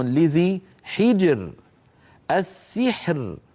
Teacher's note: كل هذه الامثله الراء فيها ساكنه وقبلها ساكن وقبله مكسور لذلك الراء مرققه